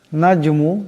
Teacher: জিম সাকিন, জিম কলকলার হরফ আওয়াজের টক্কর খাবে।